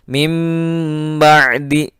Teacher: ketika ain berharakat sukun, maka suaranya tertelan masuk.